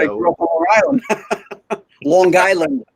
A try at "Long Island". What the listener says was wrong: Yeah, you overpronounce that G.